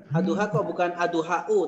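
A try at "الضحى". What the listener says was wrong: Ad-duha. Ad-duha. Enggak, itu enggak pakai u ya. Wad-duha.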